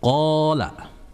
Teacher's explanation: Waid qola itu ada huruf qof bertemu dengan alif sukun. Maka itu disebut dengan mad thaobi'i dan membacanya dua harakat.